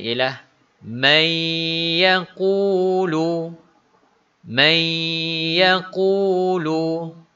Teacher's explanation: nun mati dimasukkan ke dalam huruf Ya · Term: idgham maal ghunnah